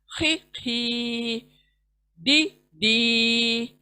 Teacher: खी हलक के ऊपर हिस्से से आएगा